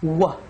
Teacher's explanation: The W sound has rounded lips and very little air